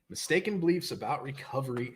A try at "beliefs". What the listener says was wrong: Sounds like you're saying bleeps. Mistaken bleeps.